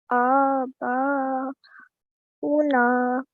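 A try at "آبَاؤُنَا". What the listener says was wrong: Very nice. So here you have ignored the vowel and you just read the hamza.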